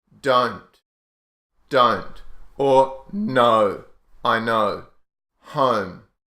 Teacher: Oh as in don't don't or no I know home so this o o sound is more open and wider than the British and American dialects so it's a bit more open mouth a bit wider a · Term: the O sound